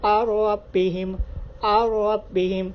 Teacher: تو نون ساکن کے بعد را کی مثال ہے، تو اس میں بھی آپ بالکل غنہ نہیں کریں گے، غنہ کے بغیر پڑھیں گے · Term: ادغام بغیر غنہ